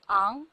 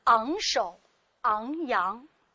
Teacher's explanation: 它首先是一个零声母音节，同时也是一个后鼻音，韵母是后鼻韵母昂